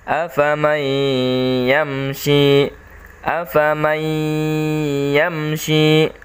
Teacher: Cara membacanya, afaman yamshi, afaman yamshi. Suara N-nya atau suara nun sukunnya hilang.